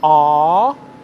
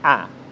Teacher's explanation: one of them is a long vowel sound /a:/ and the second one is a short vowel sound /æ/ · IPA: /a:/, /æ/